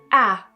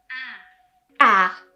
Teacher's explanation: open your mouth and keep your tongue low if your tongue and jaw are too high it might sound like e as in bed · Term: the vowel ah